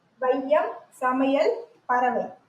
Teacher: தனக்குரிய இரண்டு மாத்திரை அளவிலிருந்து குறைந்து ஒலிக்கிறது · ஐகாரம் சொல்லின் முதலில் வரும்போது ஒரு ஒன்றரை மாத்திரை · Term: ஐகாரக் குறுக்கம்